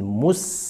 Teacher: Huruf sin sifatnya tipis, maka ketika disukun dia harus bersifat tipis, tersenyum, meskipun sebelumnya dia ada dhammah. Mu ketemu dengan sin, mus.